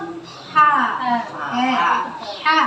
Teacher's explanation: keluar dari tengah tenggorokan. Dia sifatnya kalau bisa dibilang itu bersih. · Saya selalu bilang ha bersih karena nggak ada reak. Gitu ya. Nah, dia bersifat hams atau ada aliran nafas.